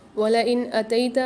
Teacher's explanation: نون ساکن کے بعد الف آ رہا ہے، یعنی یہاں پر اظہار حلقی والا قاعدہ ہوگا، غنہ نہیں کریں گے۔